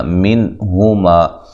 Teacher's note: یہاں نون ساکن کا اظہار ہے، غنہ نہیں کریں گے اور نون کو ہلائیں گے بھی نہیں۔ ہما، ما الف مدہ ہے، ما یہ بھی الف مدہ ہے۔